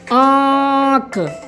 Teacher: जब हम आंख का उच्चारण करते हैं तो हमारा जो उच्चारण स्वर है वो नाक के माध्यम से निकलता है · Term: अनुनासिका